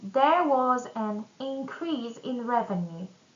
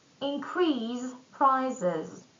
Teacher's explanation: If we put the stress on first syllable in both words, it's going to be a noun. And when we put the stress on the second syllable, it's going to be a verb.